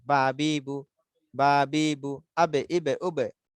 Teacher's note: দেখেন দুটা টুট ভিজা ভিজা অংশ লেগে যায়